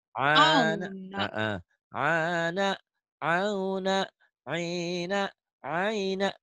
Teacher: Itu ya ciri khas orang Jawa tuh masih ke hidung. Ana auna jangan ke hidung. Ke tenggorokan